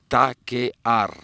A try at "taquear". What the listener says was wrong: not with L. You sound like Chinese again. Es taquear with R, not with L. Taquear. Taquear.